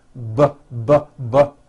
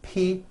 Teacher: the only difference is my vocal cords are either vibrating or they're not vibrating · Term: paired consonants